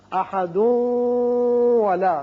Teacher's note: تنوین کے بعد چونکہ واو ہے اس لیے ادغام بغنہ ہوگا